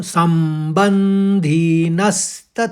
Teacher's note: मेरी आवाज म में गूंज रही है न में गूंज रही है और स में भी गूंज रही है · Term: आघात